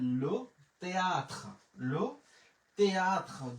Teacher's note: থে বলবো না কারণ আশের উচ্চারণ নাই